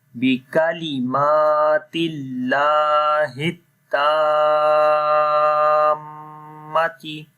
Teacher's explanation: we connect ta with the mim because mim has a shad sign and there will be ghunna.